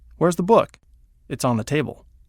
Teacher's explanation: question and response above where's the book it's on the table the inflection goes up on the question and down on the statement